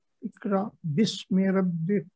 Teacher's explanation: رب اس کو بھی ذرا موٹا پڑھیں گے، را کو با پہ تشدید ہے اس پہ تھوڑا رکیں گے